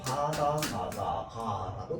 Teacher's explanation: 안 울린 예사소리의 대표적인 아이들입니다